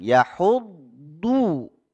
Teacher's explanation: Lidahnya bukan dibelokkan atau dilebarkan di depan, ya, tidak. Tapi pinggir lidah itu bertemu dengan, ditempel dengan geraham yang atas sampai dari belakang, ya, geraham bawah, geraham belakang sampai gigi taring. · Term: huruf dhad